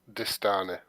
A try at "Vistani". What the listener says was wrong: It's Vistani with a V.